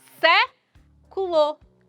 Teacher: A sílaba tônica está aí na antepenúltima sílaba. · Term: proparoxítona